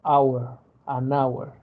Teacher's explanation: si escuchan la pronunciación de hour, no suena la H, suena la O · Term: La H es muda